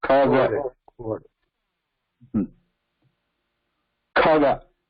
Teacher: This one requiring Kha, we're adding more breath, more prana. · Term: aspirated